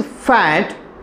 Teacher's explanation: in the production of F sound, the lower lip is actually moving towards the upper teeth.